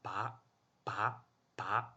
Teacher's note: 它就是在拔后面加一个浊的气流